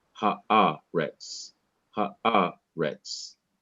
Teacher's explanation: So the emphasis is on the syllable immediately before the last syllable.